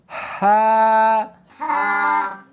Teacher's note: ہا نہیں پڑھنی بلکہ اس کو حلق میں سے نکالنا ہے، سینے میں سے نہیں نکالنا